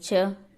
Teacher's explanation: च तालव्य तो जब हम च बोलेंगे तो तालू से जीभ लगेगी, तो इसलिए यह तालव्य हो जाते हैं। जैसे च है, बोल के देखो च, तो ये तालव्य ध्वनि हो गई।